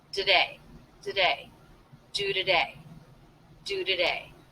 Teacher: This is most definitely a schwa, so we're reducing this unstressed syllable to be the schwa